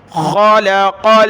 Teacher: خا اور قاف دونوں کلرفل ہیں، موٹا پڑھیں گے ان کو۔